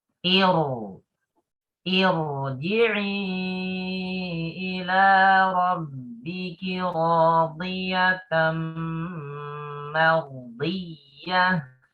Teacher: Bacanya jangan tipis ro-nya jangan. Karena sebelum ro adalah hamzah wasal maka ro-nya dibaca tebal.